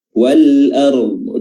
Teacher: makhrajnya adalah tepi lidah, hafatul lisan, bertemu dengan gigi geraham dari depan ke belakang. Wal ard, tepi lidah boleh mana saja, boleh kanan dan juga boleh kiri. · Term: dot